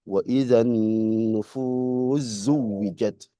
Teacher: itu sin ketemu zai itu diidghamkan